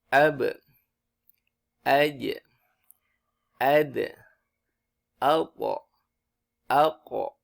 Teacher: huruf-huruf ini semua adalah huruf-huruf yang kalau harokatnya sukun itu menjadi mantul ya. Huruf ba yang sukun menjadi mantul, huruf jim yang sukun menjadi mantul, huruf dal, huruf to, huruf kof. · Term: qalqalah